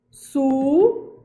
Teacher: A sílaba tônica não é gi, a sílaba tônica é men. Ela é uma paroxítona.